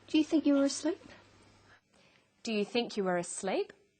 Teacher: Her voice goes up at the end of the sentence. We call this a rising tone.